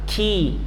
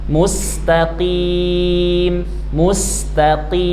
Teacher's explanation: pangkal lidah paling belakang, bertemu dia dengan dinding yang atas, ya, aqsal lisan paling belakang.